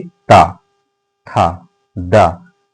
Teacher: देखिए ता था दा, जैसे ही बोलने का प्रयास करिए आप लोगों को समझ में आएगा कि दोनों दांतों के बीच में जिह्वा जाकर टच हो रही है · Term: दंत वर्ण